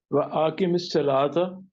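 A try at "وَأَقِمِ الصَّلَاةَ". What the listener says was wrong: नहीं वह आके नहीं, वह अकीमिस सलाता। सलाता नहीं, जरा जब वाजे करके पढ़े ना, ताराफा जिन नहार।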